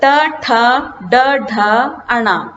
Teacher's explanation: ये मूर्धा का स्पर्श करते हैं। सो तालु के ऊपर वाला हिस्सा मूर्धा। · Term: ट वर्ग